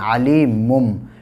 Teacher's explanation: تنوین یا نون ساکن کے بعد جب با آتا ہے تو تنوین کو یا نون ساکن کو میم سے بدل دیتے ہیں